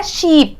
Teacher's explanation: आगे बढ़ते हैं, अब आता है ई, बड़ी ई की मात्रा है शीप, शीप का सिंबल ये श के लिए होता है, ये आई ई के लिए है, और पी, शीप, क्या बन गया, शीप, शिप नहीं बोलते हम, शीप, शीप, बड़ी ई की मात्रा है।